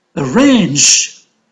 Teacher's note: Arrange is a two-syllable verb, so range is stressed. And you can say that it is on the second syllable.